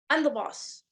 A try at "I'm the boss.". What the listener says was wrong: Good. But now say it not like you're oppressed. But like you're trying to claim some space.